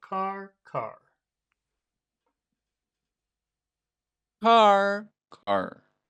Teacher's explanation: try high and then low